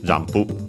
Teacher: Notice again the m pronounced as m, because then we have the p, just like in English, jampu. Of course, the additional u at the end, because we don't have p as an individual sound in Japanese